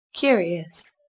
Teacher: Đó lưu ý, từ này có chứa âm k là một phụ âm vô thanh xuất hiện ở đầu từ. Các bạn cần bật hơi rõ ràng nhé.